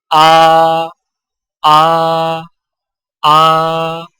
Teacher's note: حمزہ کی آواز حلق سے بغیر رگڑ کھائے نکلتی ہے